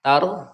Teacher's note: Hukum ro sukun yang sebelumnya berharokat fathah ini dibacanya tebal.